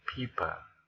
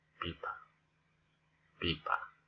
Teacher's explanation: if we say pipa, we don't give aspirated pronunciation for the sound P here. Just pipa, ordinary pronunciation.